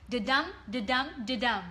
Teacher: stress not stress stress not stress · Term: Rhythm